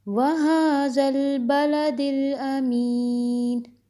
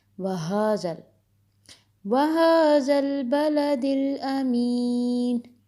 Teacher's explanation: ہا نقطے کے بغیر حلق سے ادا ہوتا ہے، اس کی آواز سینے سے ادا ہوگی